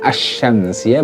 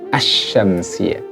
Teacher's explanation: Ya, asy-syamsiyah berarti asyam, lamnya juga udah nggak ada, udah hilang, udah dilebur. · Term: idgham syamsiyah